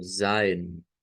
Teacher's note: lo dicen con una s silbante y con una e abierta algo como zin pasamos de un zin a zin Pues hay